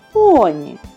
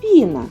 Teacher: поні перший звук п приголосний твердий піна п приголосний м'який